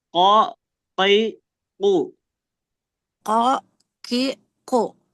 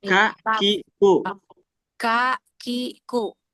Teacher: Kalau qof nyentuh bagian lembut, kaf nyentuh bagian yang kerasnya.